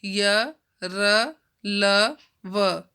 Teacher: इन व्यंजनों का उच्चारण स्वर तथा व्यंजन के मध्य का सा होता है। उच्चारण के समय जिह्वा मुख के किसी भाग को स्पर्श नहीं करती, यानी कि बीच में रहती है, ना ऊपर तालु को टच करेगी, ना नीचे टच करेगी, ना होठों को करेगी, ना दंत को करेगी। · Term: अंतःस्थ व्यंजन